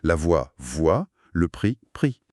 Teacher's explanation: Encore un cas où la lettre disparaît à l'oral.